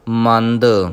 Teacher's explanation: ਜੇ ਮੰਦ ਭਾਰਾ ਕਵਾਂਗੇ ਤੇ ਦੱਦੇ ਦੀ ਜਗ੍ਹਾ ਧੱਦਾ ਲੱਗ ਜਾਏਗਾ, ਇਸ ਕਰਕੇ ਇਹਨੂੰ ਪੋਲਾ ਕਰਕੇ ਪੜ੍ਹਨਾ ਹੈ